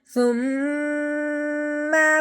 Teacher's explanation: میم پہ غنہ کرنا ہے کیونکہ میم مشدد ہے، میم کے اوپر 3 دندوں والی شاد آنے کی وجہ سے میم مشدد ہو گیا۔